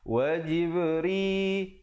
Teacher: Wa jibri ada khalkhalah di situ, jib ba bertanda sukun. Ri dibaca nipis.